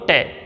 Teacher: ट को बोलते समय हमारी जीभ की जो आगे वाली नोक है, हमारी जीभ की जो नोक है वो तुरंत ऊपर वाले दांतों के मसूड़ों को स्पर्श करती है। और मैंने कहा था कि हमारे जो ऊपर वाले दांत हैं उनके जो मसूड़े हैं उसी को तो मूर्धन्य का भाग बताया था मैंने।